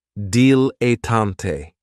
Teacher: this word has three syllables and there's kind of like a stress on that first and last syllable